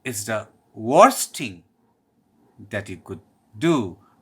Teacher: I'm giving stress on worst things and do.